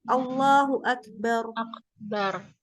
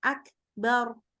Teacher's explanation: Jadi memang huruf kaf itu keluar udara soalnya.